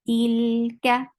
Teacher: ka is short, and kaf is light